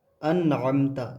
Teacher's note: ناک میں آواز بالکل بھی نہیں لے جانی ہے